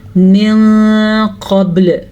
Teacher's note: یہاں پہ با پہ کلکلا ہو رہا ہے. قاف طا با جیم دال 5 ایسے حروف ہیں، جب بھی ان پہ ساکن آ جائے گا تو جھٹکی کی کیفیت پیدا ہوگی، اسے کہتے ہیں قلقلہ.